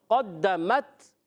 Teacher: ما قدمت، ما ایک الف کھینچنا ہے، قاف حروف مستعلیہ میں سے زبان کی جڑ و تعلق کے نرم حصے سے قاف ادا ہوتا ہے۔ قدمت، دال مشدد ذرا رک کر ادا کریں گے